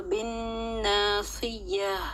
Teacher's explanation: یہاں پہ وقف جو کیا میں نے تو گول تا کو گول ہا میں بدل دیا